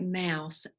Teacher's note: your lips are together and it comes out your nose